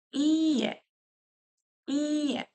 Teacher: підряд тобто тут написано дві букви і а потім е і я читаю Ці дві букви і як подовжено іє іє тобто тут у нас з вами буде продовжуватися буква